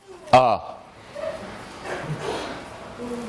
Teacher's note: the vowel you get by moving the tongue not at all it goes neither forward nor back it goes neither up nor down the lips are unrounded